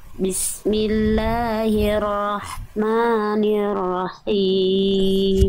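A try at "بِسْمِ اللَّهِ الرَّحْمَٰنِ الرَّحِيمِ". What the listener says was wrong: ya tinggal sempurnakan vokal i-nya Bunda ni dan Hi biasanya vokal I itu kurang sempurna ketika bertemu dengan huruf tebal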